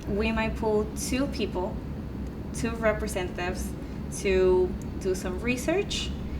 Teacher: that word research went up but that's because then you wanted to contrast it with the components of the research so you knew what you were doing you kept your voice